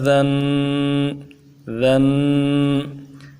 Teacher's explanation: یہ ذن ایک الف کی مقدار میں کھینچنا غنّہ کر کے، یہ تنوین کا مخرج ہے۔